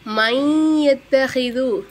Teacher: சுக்குன் பெற்ற நூனை நம்ம உச்சரிக்கலை